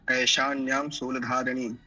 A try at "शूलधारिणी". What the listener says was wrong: शूल दीर्घ उकार